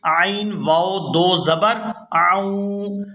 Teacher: عین کو واو مشدد کے ساتھ ملائیں گے تو غنہ کریں گے